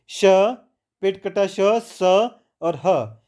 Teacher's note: ऊष्म व्यंजन होते हैं जिनको बोलते हुए हमारी जो सांस है वो रगड़कर गर्म होकर बाहर आए, वो ऊष्म व्यंजन होते हैं।